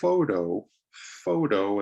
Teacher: a 2-syllable word, you stress the first O, photo. But the profession, photographer, you stress the second O.